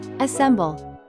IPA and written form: əˈsem.bəl (assemble)